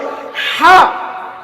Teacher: বড় হা বলি, যেটি কণ্ঠনালীর মাঝখান হতে উচ্চারিত হয়